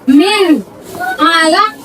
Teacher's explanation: Qalaq dibaca, dipantulkan dengan keras. Ini hukum bacaannya qalqalah kubra.